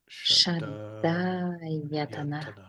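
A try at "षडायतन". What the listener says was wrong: So you see the rhythm of that. And your tongue should be up against the roof of your mouth, straight up into your brain, because those are cerebral letters. Shraddha-yatana.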